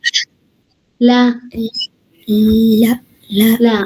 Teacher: പിന്നെ അതാ ലോ, ല, ഇതൊക്കെ നാവിന്റെ ഇവിടുന്ന് വരുന്നതാണ്. ല എന്നുള്ളത് നാവിന്റെ ടിപ്പ്, അറ്റത്തുനിന്ന്, ഈ മുമ്പത്തെ അറ്റത്തുനിന്ന് വരുന്നതാണ്.